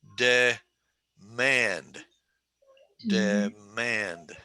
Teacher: 2 syllables, emphasis on the second syllable. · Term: 2-2 word